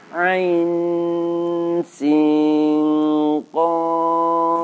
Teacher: terdapat bacaan ikhfa haqiqi karena disitu terdapat bunyi nun mati bertemu dengan huruf sin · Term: ikhfa hakiki